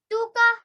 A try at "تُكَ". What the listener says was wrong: Okay, are you sure you read it well? Because here, wow, Madhya we've got. So we need to prolong it for 2 seconds, if you remember. Tuka.